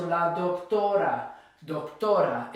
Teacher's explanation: it ends in a vowel, so it's the second to last syllable that gets stressed.